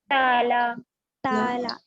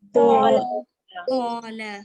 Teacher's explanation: पहली मिसाल में ता तो बारीक पढ़ने वाला हर्फ है, इसको हम बारीक पढ़े। नीचे की मिसाल में तो मोटा पढ़ने वाला हर्फ है, हम इसको मोटा पढ़े।